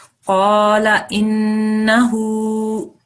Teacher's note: we need to make sure that we stop on the noon a second long